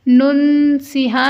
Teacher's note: نون ساکن کے بعد سین ہے یعنی حروف اخفا تو ہم غنہ کر کے پڑھیں گے اور ہا سینے سے ادا ہونے والی ہا ہے.